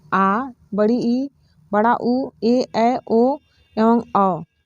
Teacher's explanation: बड़ा उ ए ऐ ओ एवं अ यह दीर्घ स्वर है इनके उच्चारण में हस्व स्वर की अपेक्षा दुगुना समय लगता है चूंकि इनमें दो मात्राओं का समय लगता है अतः इन्हें द्वि